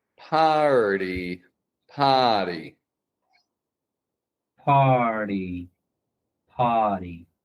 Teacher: Just get that R defined before the flap T.